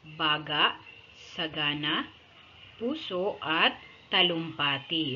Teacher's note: Ang malumi ay binibigkas tulad ng malumay. Ang kaibahan lamang ay may impit na tunog sa huli. Nagtatapos sa pantig at nilalagyan ng tuldik na paiwa.